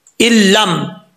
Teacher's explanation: نون ساکن کے بعد لام آ رہا ہے، ادغام تو ہو رہا ہے، ادغام یرملون ہو رہا ہے، لیکن بغیر غنہ کے ہو رہا ہے۔ آپ کو میں نے بتایا تھا کہ نون ساکن کے بعد جب لام آتا ہے تو وہاں پہ غنہ نہیں کیا جاتا۔